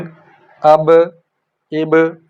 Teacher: इसी तरह अक, इक, उक, अज, इज, उज, अब, इब, होंठों से अदा होता है ना हरफ बा, तो 2 होंठ आपस में मिलते हैं फिर अलग हो जाते हैं फौरी, तो वो कलकलाहट सी पैदा होती है